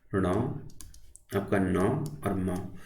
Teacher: नासिक के व्यंजन आपके होते हैं जिनके उच्चारण में वायु नाक से निकलती है